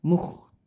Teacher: Terus kho-nya dibaca kasar. Jadi suaranya serak atau kasar atau mendengkur gitu ya.